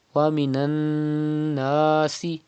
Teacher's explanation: It is noon mushaddad. You have to pronounce noon mushaddad with gunna. That means you have to keep the sound in your nose up to 2 harakat. · And then stretch alif madda. Because there is a zaba before alif. It is alif madda. You have to stretch up to 2 harakat.